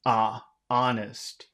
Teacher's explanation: in North America, usually when you have an O, it sounds like an A.